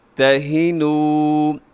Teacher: آگے واو مدہ ہے، تھوڑا سا اسے کھینچ کے لمبا کر کے پڑھیے گا